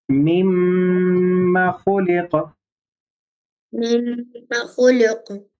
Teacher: میم کو کھینچنا نہیں، غنہ کرنا ہے میم پہ.